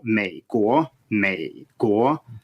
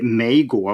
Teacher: You start low and you go down a little bit, but just think of it as a low tone